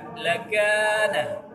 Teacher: huruf kaf juga terjadi hukum mad asli karena ada alif di depan kaf. Nah, dipanjangkan 2 harakat. Lakana. 2 harakat.